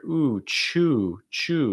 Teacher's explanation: Small round lips, just like in choose. Small round lips. Front of your tongue is down, back of your tongue is high. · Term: ooh sound